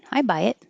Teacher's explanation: I buy it, meaning I believe it. And you hold the T because you won't release the air. Just hold your tongue in the T position.